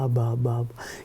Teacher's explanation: La A como la primera vocal y la B, esa bilabial, que es apenas un balbuceo